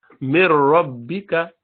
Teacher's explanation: نون گرا دیا پورا نون ساکنہ اور را ڈائریکٹ بولا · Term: ادغام